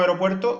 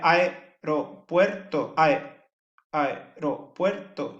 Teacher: uniría la A con la E en una sola sílaba. Y sería aeropuerto, aeropuerto, y serían 4 sílabas en vez de 5. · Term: sinéresis